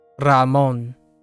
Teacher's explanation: the name that I chose had a rolling R in it